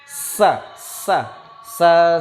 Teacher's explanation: Maka sa ini keluar dari antara gigi atas dan gigi bawah yang hampir tertutup. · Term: huruf sa